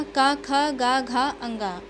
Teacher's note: इन सभी का उच्चारण कंठ से किया जाता है